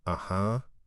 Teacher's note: It's pronounced with a slight upward or flat intonation.